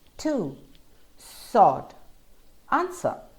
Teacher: you don't hear the w at all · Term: silent w